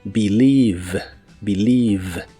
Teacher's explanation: No se pronuncia ningún sonido E en esta palabra, solo dos sonidos I.